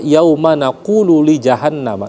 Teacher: nun bertasdid ya wajibal ghunah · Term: gunnah